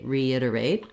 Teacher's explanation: the re syllable does have a little bit of stress. And that means the letter E is going to say the e sound here versus other words with re that have more of a ri, a reduced vowel.